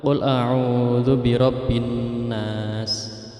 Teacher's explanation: setiap akhir ayat dalam surah An-Nas itu bacaan gunnah. Jadi harus dengungnya diperlihatkan 3 harokat.